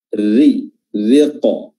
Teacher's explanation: Nah, ini namanya alif lam syamsiyah, ya. Dan huruf ra di sini tipis, ya, karena dia berharokat kasrah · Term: tarqiq